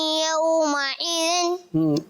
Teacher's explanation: आइन की आवाज नहीं आएगी, आइन की आवाज नहीं आएगी, हमजा है।